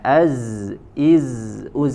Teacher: ada desis ya. Dan desis yang dihasilkan suaranya tadi tajam karena sempitnya ruangan aliran dari suara yang dilalui.